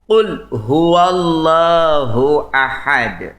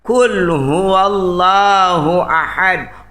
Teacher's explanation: itu termasuk huruf yang tebal huruf isti'la yang meninggikan lidah ke langit-langit